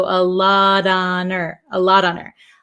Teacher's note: the H in her kind of disappears also